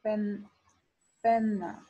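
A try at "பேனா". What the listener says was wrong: It's like it has an A in it. So it's like it's P-E-A. So it's got like a different kind of flow to the word.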